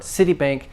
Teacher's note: stress on the first part, CityBank. Again, don't blend the S with the E.